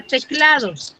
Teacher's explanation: ¿Dónde tiene la mayor fuerza de voz? En cla.